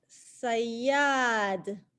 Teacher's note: Double yeah and a long ah.